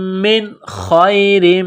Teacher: نون ساکن کے بعد خا ہے، حروف حلقی ہے تو نون ساکن پر غنہ نہیں کریں گے، آواز ناک میں نہیں چھپائیں گے